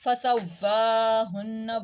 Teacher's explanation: واو کھڑی زبر ہے اس کو 1 الف کے برابر لمبا کریں گے